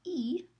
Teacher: la lengua está en una posición alta y está hacia delante en la boca cuando se articula la i. Entonces, viendo aquí las categorías, las etiquetas para las columnas y las filas, vemos que aquí en este cuadrante es alta anterior.